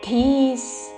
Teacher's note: మహాప్రాణాక్షము ధ దీర్ఘముతో ధీస్